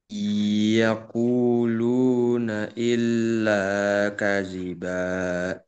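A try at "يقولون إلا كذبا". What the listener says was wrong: Nah, di i karena ini ada guna, idgham guna, maka jangan sampai tidak digunakan. Iyakuluna illa kaziba.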